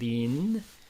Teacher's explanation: Lin in Chinese, second tone, rising tone.